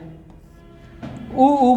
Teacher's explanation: उ उ बोला जाता है हमारा ओस्ट से